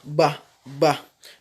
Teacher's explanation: La lettre Ba, elle se prononce en joignant les lèvres, tout simplement